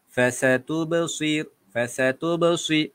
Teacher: Dia ada seolah-olah bunyi bersiul sedikit pada huruf sad tadi tu. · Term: sofir